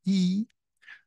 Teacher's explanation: when we produce the E uh our tongue is raised at the front of our mouth